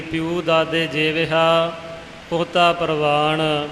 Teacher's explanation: ਪੱਪੇ ਨੂੰ ਸਿਹਾਰੀ, ਯਈਏ ਨੂੰ ਦੁਲੈਂਕੜ ਹੈ, ਪਰ ਜਦੋਂ ਉਚਾਰਨ ਕਰਨਾ ਹੈ ਤੇ ਪਾਠ ਪਿਉ ਬਣ ਜਾਵੇਗਾ। ਯਈਏ ਦੀ ਥਾਂ ਤੇ ਊੜੇ ਦੀ ਆਵਾਜ਼ ਨਿਕਲੇਗੀ